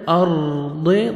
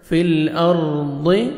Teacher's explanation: ضاد کو موٹا کر کے پڑھنا ہے. فی الارض، موٹا کر کے پڑھیں گے ضاد کو.